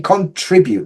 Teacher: for me, contribute, the stress is on tree.